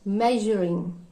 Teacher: Ir sound கேட்க கூடாது